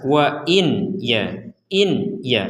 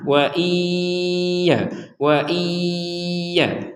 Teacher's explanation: ya itu dibaca dengan jelas maka sekarang dari yang jelas ini kita masukkan nun sukun dimasukkan ke huruf ya sehingga menjadi wa iya